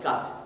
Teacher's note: cards cat and cut in english will all come out as something like gut